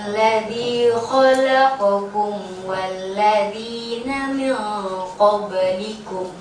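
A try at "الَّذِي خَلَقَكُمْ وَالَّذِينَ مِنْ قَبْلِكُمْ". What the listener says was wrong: Jangan salah nahan. Jangan nahan di izhar syafawi. Malah nahan di izhar syafawi nanti jadi gunnah. Ternyata dia bukan gunnah. Tahan di iklab itu. Min qabl. Jadi langsung ada la'alla.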